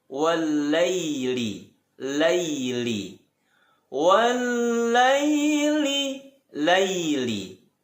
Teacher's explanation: Lai yang betul adalah dia tetap dominan ke arah suara i. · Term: ya sukun